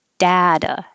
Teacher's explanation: Americans are going to change that T to a D. Data, and this would be as the stressed vowel, data.